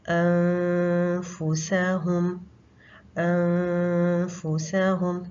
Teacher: زبان کی نوک کا استعمال نہیں ہوگا کیونکہ ہم نے نون کے مخرج پہ نہیں جانا ، تو ہم نے نیکسٹ مخرج کے قریب رہنا ہے، اپنے · گے جیسے ہم نے فا ادا کرنے ہی والے ہیں، یعنی اوپر والے جو 2 دانت ہیں ان کو نیچے والے ہونٹ پہ کے قریب ہم لے کر آئیں گے، اور پھر ہم آواز کو ناک میں لے جائیں گے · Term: غنہ